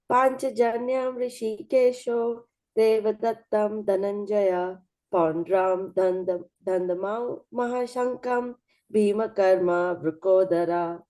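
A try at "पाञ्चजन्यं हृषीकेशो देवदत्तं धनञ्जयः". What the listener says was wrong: You chanted very nicely, but the tune wasn't that good.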